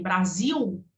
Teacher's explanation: Nós não usamos o L final na fonética, nós usamos a semivogal U.